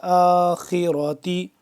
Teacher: خا بھی موٹا را بھی موٹا